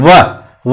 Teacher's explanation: नीचे वाला होठ अंदर की ओर जाएगा और दांत के ऊपर जाएगा तो दंतोष्ठ, ठीक है।